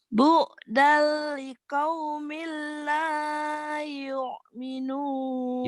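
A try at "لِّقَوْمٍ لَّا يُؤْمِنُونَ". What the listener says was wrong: Yuknya jangan neken, jangan ke tenggorokan. Ini kan hamzah. yuk, minum yuk, gitu.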